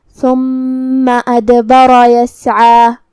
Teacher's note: کلمت ثم میں یہاں حرف الثا کو زبان کے سر اور اوپر والے دانتوں کے اندرونی کناروں سے ادا کرنا ہے